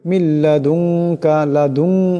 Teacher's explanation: এখানে নুন সাকিনের পরে কাফ আসছে, ইকফা হবে, ইকফার একারে পরিমাণ গুণনা হবে